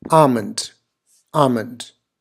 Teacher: so essentially you don't want to produce that L sound can you can pretty much neglect this L sound here